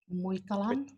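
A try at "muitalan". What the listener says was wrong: Muistalan, good.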